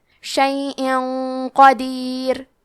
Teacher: قاف حروف الاخفاء میں سے ہے، اخفاء کا معنی ہے چھپا دینا، تو ہم تنوین کو چھپاتے ہوئے اور غنہ کے ساتھ یہ حکم کو ادا کریں گے، کیونکہ غنہ اپنے اگلے والے حرف کا حکم لیتا ہے تفخیم میں اور ترقیق میں، اور قاف حروف التفخیم میں سے ہے، تو ہم یہ غنہ کو بھاری آواز میں ادا کریں گے۔